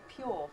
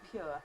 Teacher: I do have an ʊə, and this tends to be after a j sound. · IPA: pjʊə